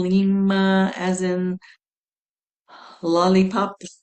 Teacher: Oh, and when you make the L sound, like the tip of your tongue, the front of your tongue touches your upper palate, the sides kind of fall down, and you feel that resonating your all the way down your tongue, which goes all the way into your throat.